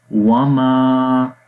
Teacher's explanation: وما، یہاں پر الف ہے، الف سے پہلے زبر ہے، 1 سیکنڈ لمبا کریں گے